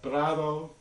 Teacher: Yes, Spanish has words like prado, which is that's a tap rhotic with a stop before it